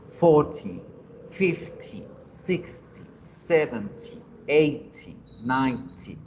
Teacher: Y los que son de 10 en 10 va con el acento o la fuerza en la primera sílaba.